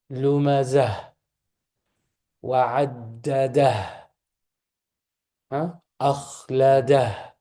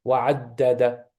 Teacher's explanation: Ta marbuta, when you stop on it, it becomes a ha, right? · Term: ha sound